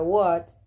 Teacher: es una vocal medio abierta trasera que se emite redondeando los labios